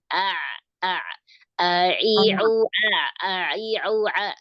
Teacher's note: Untuk mengeceknya hidung kita ditutup ee jangan sampai ainnya lari ke hidung